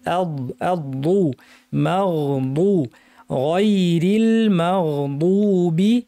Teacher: বদ হরফটা জিব্বার দুই পাশ ব্যবহার করে আমাদেরকে গাল থেকে উপরের পাটির দাঁত থেকে উচ্চারণ করতে হবে